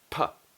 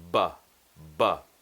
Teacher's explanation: These are what we call bilabial plosive sounds, meaning that they require both lips and they're plosive, meaning that the lips open, and at that point when the lips open, it creates the sound. Now, the only difference between these two sounds, P and B, is that one is voiced and one is unvoiced